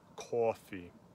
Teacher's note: It is ah with rounded lips, like a northern New Jersey pronunciation of coffee.